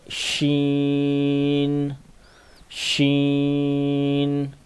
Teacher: زبان کا جو درمیان ہے یہ تالو کے ساتھ لگتا ہے تو یہ لفظ ادا ہوتا ہے